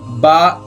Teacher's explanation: با ہونٹ بند کر کے ادا ہوتا ہے